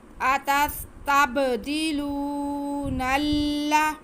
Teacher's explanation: अतस्तब्दिलू क़ाला अतस्तब्दिलू, आगे नून पे ज़बर है और लाम, नून के बाद जो लाम आ रहा है अगले लफ्ज़ में वो मुशद्दद है। हम नून का ज़बर लाम के साथ मिला के पढ़ेंगे।